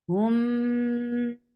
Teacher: for dhamma, circle your lips and give ghunna on mim